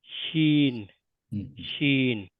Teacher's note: শিন উচ্চারিত হবে শিন জিভের মাঝখানটা উপরের তালুতে টাচ করবে।